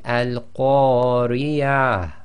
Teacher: you've got to just bring out a tiny bit of a ha sound from the bottom of your throat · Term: ha sakin